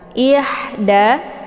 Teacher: ditekan saja ihda ini ha kecil ya jadi sifatnya adalah Hamas cara bacanya didesiskan angin yang agak samar-samar